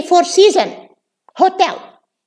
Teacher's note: they delete the S because they are applying uh the rules of consonant um clusters at the end of words we don't have consonant clusters of especially with an s in